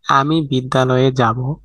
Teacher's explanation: বাক্যটি বলার সময় আমি বিদ্যালয়ে যাব হয়ে যায়। এখানে বিদ্যা এর আ ধ্বনি এবং আলয়ের আ ধ্বনি মিলে গেছে। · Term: সন্ধি